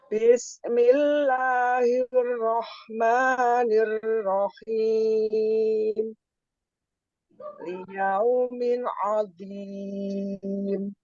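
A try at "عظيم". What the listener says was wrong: Sudah bukan zal, tinggal kurang disempurnakan dikit aja.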